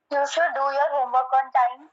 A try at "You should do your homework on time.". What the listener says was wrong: हाँ, थोड़ा टोन का ख्याल रखे, हाँ, गुस्से वाला नहीं, सजेशन वाला.